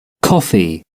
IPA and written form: ˈkɒfi (coffee)